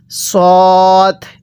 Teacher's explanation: সদের মাখরাজ হলো জিহ্বার আগা সামনের নিচে দুই দাঁতের আগার সঙ্গে লাগাইয়া এই সদটা উচ্চারণ হবে · দদকে দালের সাথে মিলিয়ে দিবেন না, আর সদকে সিনের সাথে মিলিয়ে দিবেন না, কারণ সিনের উচ্চারণ একরকম, সদের উচ্চারণটা হবে আরেক রকম। সদের মাখরাজ হলো জিহ্বার আগার সামনের নিচে দুই দাঁতের আগার সঙ্গে লাগাইয়া এই সদটা উচ্চারণ হবে